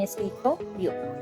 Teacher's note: Por ejemplo, por ejemplo, podemos hablar de la palabra escritorio, que la sílaba atona es escririo, y la sílaba tónica es to, porque va la fuerza ahí en escritorio